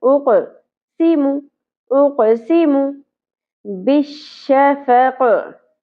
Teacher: कॉफ को पुर पढ़ा जाएगा और साकिन होने की सूरत में यहाँ पे कलकला भी होगा बाउंसिंग साउंड के साथ।